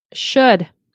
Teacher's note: we never pronounce the L